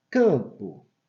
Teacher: É nasal, por isso que teria o tio. Quando ela tem um M, ela acaba também nasalizando o som, né?